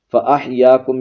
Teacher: یا الف زبر یا، ایک الف ہی کھینچیں گے، زیادہ نہیں لمبا کریں گے